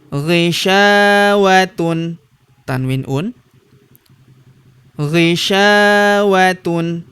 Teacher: huruf sya kita panjangkan dua harakat karena terdapat tanda alif di depannya